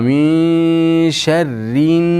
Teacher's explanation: min sharrin nunga bog'lab o'qiymiz. G'unnasi eng komil darajada bo'ladi. Sharrin naffati fa tashidini bildiramiz.